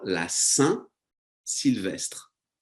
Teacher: Very nasal sound again on Saint.